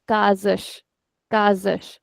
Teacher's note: The S that is coming in the middle of the word, it is coming in between two vowels. So our rule says it is z, whereas the last S is sh.